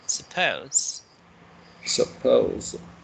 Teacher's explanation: So it's not su, but pose. That's the stressed one